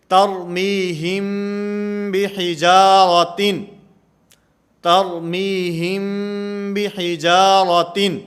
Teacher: میم ساکن کے بعد اگر با آئے گی تو یہاں پر اخفا ہوگا، جیسے ترمیہم بحجارۃ، ترمیہم بحجارۃ، یہاں پر اخفا مال غنہ کا معنی غنہ بھی کریں گے، آواز کو ناک کے اندر بھی لے جائیں گے اور با کو ادا کرتے ہوئے یہ ہونٹوں سے نرمی کے ساتھ ادا کی جائے گی